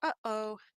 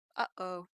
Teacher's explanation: if you say uh oh you might even be able to feel that little bit of tightening in your throat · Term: glottal stop